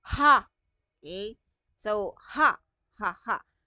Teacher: may parteng lalamunan ninyo yung ha Okay so ha ha ha hindi magdidikit si labe hindi magdidikit si ngipin Nandito lang siya sa glot part natin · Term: pasot